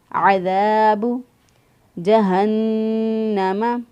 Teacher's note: وسط حلق سے ادا کیا، دال کو نرمی سے ادا کیا، دال زبر الف دا، ایک الف کے برابر لمبا کریں گے اس کو